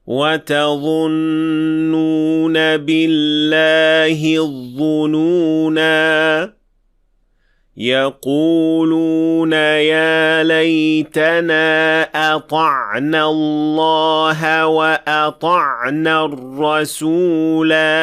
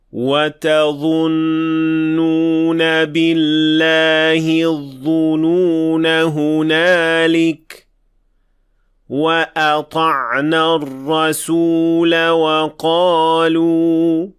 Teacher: notice how we extend the alif at the end when stopping for 2 counts, and also notice that we do not overextend beyond 2 counts, since you may not overextend the alif when it has natural mad.